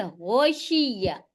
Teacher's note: حلق کے ابتدائی یعنی شروعاتی حصے سے غین ادا ہوتا ہے